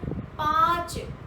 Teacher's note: आ की ध्वनि आई, तो श्वास वायु ना कंठ में रुकी, ना मूर्धा में रुकी, ना तालू में रुकी, ना दांतों में रुकी, ना होठों पर रुकी। कहीं भी आपकी श्वास वायु मुख में अवरुद्ध नहीं होती है। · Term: अनुनासिक